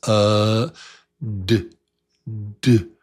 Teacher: The tongue taps with the voice. It has to have some voice. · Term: Tongue taps with voice